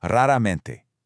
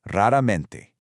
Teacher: In Portuguese, that beginning R has a slightly guttural, almost H-like sound.